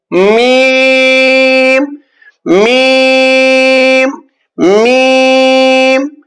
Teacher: खुश्की वाले दोनों होठों के खुश्की हिस्से से अदा होते हैं